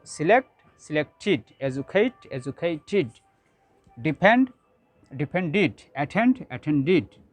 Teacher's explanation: if the root word ends in ta or da sound, in this case we have to pronounce ed ending like id